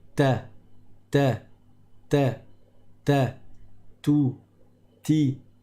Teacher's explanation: Tout comme le T en français, tout comme le T, il consiste à poser le bout de sa langue sur le bout du palais, au niveau de la racine des dents supérieures, n'est-ce pas, quand on dit ta, ta, ta, ta, tout, ti.